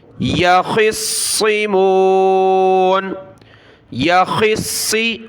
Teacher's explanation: خا کو صاد کے ساتھ ملایا، دونوں کو موٹا پڑھنا ہے اور صاد کو سخت کرنا ہے تشدید کی وجہ سے۔ یخصمون، یخصی، خا اور صاد دونوں پر زیر ہے۔